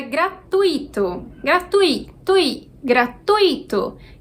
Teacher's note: então tui é uma única sílaba